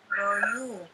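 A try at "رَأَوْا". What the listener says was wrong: Rau langsung ya. Nah, ya-nya dibuang.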